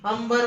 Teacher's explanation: अंबर मध्ये सुद्धा या म चा उच्चार अनुनासिका सारखा होतो